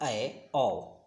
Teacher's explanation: अर्धविवृत में होता है पूरा मुंह नहीं खुला होता है, आधा मुंह खुला होता है। अर्धविवृत स्वर होता है, इसमें आ नहीं अ के लिया जाएगा, यानी अ और ए और औ के लिया जाएगा, अ ए औ, जो कि अर्ध विवृत स्वर के अंतर्गत आता है।